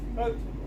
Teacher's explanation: stress is on the beginning, photo, and then the unstressed is the graph, photograph.